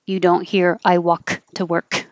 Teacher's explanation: You won't hear any Ks. The tongue goes to the K position and stops.